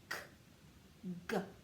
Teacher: K and G are both made in the back of the mouth. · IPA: /k/ and /g/